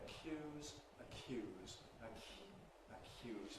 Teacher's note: we get voiceless yod ([j̊]). That’s all the aspiration takes. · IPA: [əˈkj̊uːz]